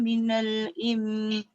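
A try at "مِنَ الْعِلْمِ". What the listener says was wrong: Dia tak boleh bunyi im. Kalau kita baca minal im, lam tak ada. Minal ilm. Ilm. Mesti lam dulu.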